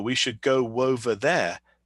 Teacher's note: native speakers are going to say go over there with a W sound inserted